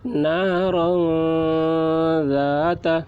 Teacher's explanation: را کے اوپر دو زبر کی تنوین ہے، تو تنوین کے بعد حروف اخفا میں سے ذال آ رہا ہے، اس لیے تنوین کی آواز کو ناک میں چھپا کر پڑھیں گے، اس کو اخفا کہتے ہیں۔